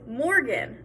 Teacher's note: i put the stress on the mor in morgan